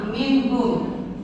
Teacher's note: dibacanya jelas nunnya, tidak ada samar, tidak ada juga masuk atau melebur ya.